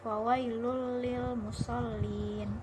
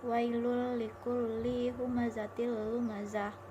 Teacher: Yang kedua, di dalam surah Al-Maun ayat 4 yang berbunyi fawailul lil musallin. Di sini tanwin bertemu dengan huruf lam, maka dibaca tanpa mendengung. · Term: idgham bila gunnah